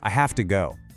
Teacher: In natural speech, have to almost always sounds like hafta.